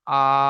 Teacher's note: আলিফ মাদাহকে এক আলিফ পরিমাণ টান দিয়ে পড়তে হয়। এক আলিফ পরিমাণ আপনারা জানেন একটা খোলা হাতকে স্বাভাবিকভাবে বন্ধ করতে অথবা একটা বন্ধ হাতকে স্বাভাবিকভাবে খুলতে যে সময়টুকু লাগে এটাকে বলা হয় এক আলিফ পরিমাণ। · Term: আলিফ মাদ্দাহ